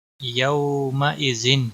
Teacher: تنوین کے بعد حروف حلقی کا عین آیا ہے اس لیے یہاں پر اظہار حلقی ہوگا